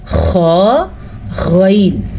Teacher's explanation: حلق کا بالکل شروع والا حصہ جو منہ کے ساتھ ٹچ ہوتا ہے اندر، اس سے نکلتے ہیں خا اور غین، ٹھیک ہے؟ ان دونوں میں گلے میں خراش جہاں پہ ہوتی ہے، ہم کبھی کبھی گلے کو تھپ تھپاتے ہیں اس طریقے سے، وہاں جو آواز نکلتی ہے وہیں سے نکلتا ہے خا غین، ٹھیک ہے؟